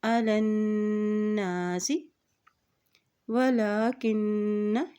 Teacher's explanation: नून के ऊपर शद है और जब नून के ऊपर शद आती है तो वहाँ पर गुन्ना भी अदा किया जाता है तो यहाँ पर गुन्ना भी अदा करेंगे अलन्नासी वलाकिन्ना।